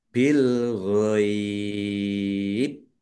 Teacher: Nah, bak sukun kan baknya karena wakop maka sukun. Bak sukun bacaan kolkolah ya dibaca memantul.